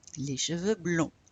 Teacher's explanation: We don't pronounce the D or S.